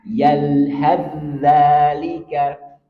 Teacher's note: Karena kalau nggak paham nanti saya terbaca yalhadzalika, nggak boleh. Dia langsung melebur ke za.